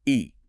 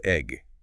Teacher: The name E is a long vowel sound. Right. But the E in egg, much shorter.